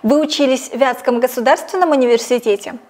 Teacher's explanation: логическое ударение падает на слово «вятский». У собеседника уточняют, в каком именно вузе он получал образование.